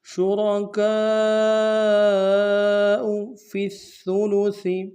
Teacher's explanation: فا کو آگے سا کے ساتھ ملانا ہے، سا کو باریک ادا کریں گے، سا کے اوپر تشدید زور دیں گے · کاف کے ساتھ الف مدہ کے اوپر بڑا مد ہے، کم سے کم 3 الف امتداد میں کھینچیں گے۔